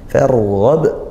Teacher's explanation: di akhir ba sukun dan dia dibaca waqaf sehingga qalqalah kubra. Nah, dipantulkan membacanya